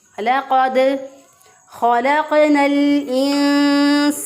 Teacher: خا کو بھی موٹا پڑھیں گے کیونکہ حروف مستعلیہ میں سے ہے ، خلق قاف جو ہے اس پہ پھر قلقلہ ہے کیونکہ